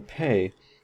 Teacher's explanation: the P in pay is aspirated. It has this little H up here that we transcribe it with because we have a puff of air